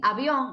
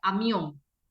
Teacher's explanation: Son bilabiales los dos, son bilabiales, pero la B es vibrante. Tienes que dejar un poquito de aire y ve que lo puedes sentir aquí, y la M no.